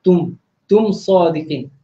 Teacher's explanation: mim mati ni kita tak perlu dengung. Ini kita panggil izhar syafawi, yang mana bila huruf mim mati ni bertemu selain daripada huruf mim dengan ba, itu dikenali sebagai huruf izhar syafawi, jadi tak perlu dengung.